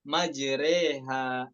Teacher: tumalu fathatur ra ma bainal fathah wal kasrah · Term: imalah kubro